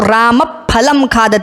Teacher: ये सामान्य संस्कृत में बोलते हैं, लेकिन जब इसको हम एक सही तरीके से उच्चारण करेंगे तो राम फलम खादति, यानी उपध्मानीय का उच्चारण ओष्ठ से करना पड़ेगा